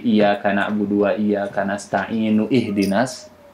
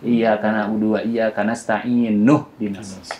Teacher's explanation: Hamzah wasal itu dia harus disambung dengan huruf sebelumnya. Jadi tidak dibaca lagi iyaka na'budu wa iyyaka nasta'inu ihdinas, tapi dilangsungkan iyaka na'budu wa iyaka nastainuhdinas seperti itu.